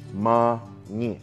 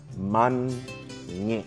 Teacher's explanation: We need to hear that hard N at the end of the first syllable.